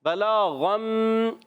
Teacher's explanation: غین ادا ہوتا ہے حلق کے اوپر والے حصے سے، غین اور خا، ٹھیک ہے، موٹا بھی پڑھیں گے اس کو۔